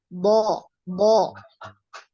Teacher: Ditebalkan. Jadi dinaikkan pangkal lidahnya sama ketika kita mengucapkan huruf qaf.